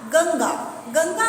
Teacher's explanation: गंगा अगर हम कहते हैं तो इसमें ना का उच्चारण आधा होता है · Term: आधा ना